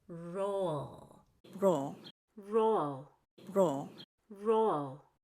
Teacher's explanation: I want to say roll so that my O is very separated from the ul sound.